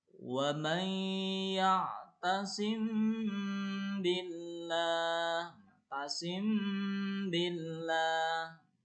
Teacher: Ini nanti mim sukunnya dilafalkan samar, ya, menjadi gunah atau gunah itu dengung ya. Mim sukunnya menjadi gunah atau samar-samar dan ditahan 2 harokat. · Karena mim matinya bertemu dengan ba sehingga mimnya jadi dengung. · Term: Ihfa safawi, ihfa safawi